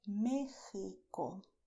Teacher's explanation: You can say MÉXICO, soft, with your throat, or a little stronger, also with your throat